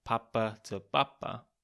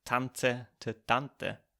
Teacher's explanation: quite an austrian thing to do to soften the hard plosives a lot of peas become like bees